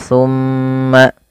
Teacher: tahanlah bacaan tumma karena ia bacaan gunah sehingga mimnya wajib ditahan sepanjang dua harakat